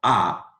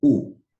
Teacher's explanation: si digo a sale más aire que si digo u veis mi boca está más abierta